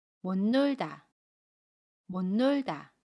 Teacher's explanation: 그러면 못 놀다 라고 발음해요. 받침 시옷은 받침소리 니은으로 발음하고 첫소리 니은은 그대로 발음합니다.